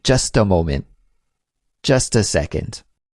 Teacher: When you use just with that article, a, then we say just ta